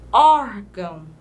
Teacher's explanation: aí que o ó é mais aberto e também essa sílaba a junção do o com R é uma sílaba tônica